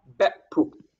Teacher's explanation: So two syllables, both ending in glottal stop.